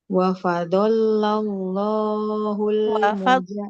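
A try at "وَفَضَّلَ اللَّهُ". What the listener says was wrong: Wafaddoh. Bukan wafadollah ya. Yang bertakhid huruf apa Ibu? Bukan wafadollah. Tapi wafaddolah. Wafaddolah.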